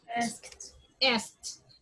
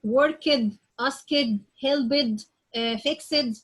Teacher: if you have a verb ending in the sound of the F sound, S sound, P sound, Sh sound, Ch sound, and K sound, and you add D or ED, so I say it like T